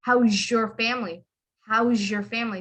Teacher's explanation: But anyway, so he would make that zh. It has a sh sound, but it's more like zh. You hear the z.